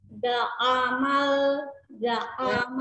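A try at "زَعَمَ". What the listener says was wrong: Ya, seolah-olah seperti terpisah antara za dengan a-nya. Za'amal. Nah, disambungkan. Za'amal, bukan za'amal. Kan kepisah kalau kayak gitu. Ya, harus perlu latihan ketika ainnya ini ya. Ya, jadi ainnya tidak diangkat.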